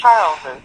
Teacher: you hear the Z sound for the Charles, and then the EZ after it